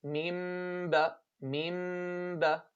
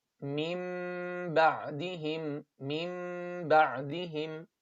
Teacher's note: So وَالَّذِينَ جَاءُوا مِن بَعْدِهِمْ, as you can see here, this meme means qalb. So we're gonna change the noon sakina into a meme at the ba. And how we do that, we just close our lips normally with a meme and we open them with a ba.